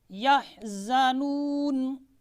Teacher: یحزنون، یہ ہم نے قصر کیا ہے 1 الف کی مقدار